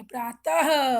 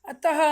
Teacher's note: उच्चारण के समय अ के बाद ह बोलते हैं, ठीक है। ह की ध्वनि निकलती है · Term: विसर्ग